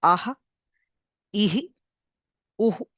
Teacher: visarga is called an aspirant. That is, it is basically expelling air. Visarga is release.